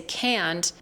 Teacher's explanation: When I say can't, it is super flat, but it is also stretched out. It's really just like a piece of gum and you're taking it and stretching it out.